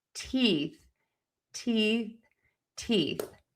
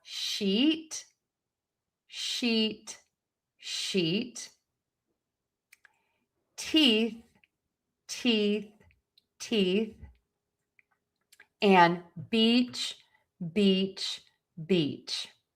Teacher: I am smiling. My cheeks are tense. Everything is kind of engaged and tense. That makes my tongue go nice and high in my mouth. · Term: long E sound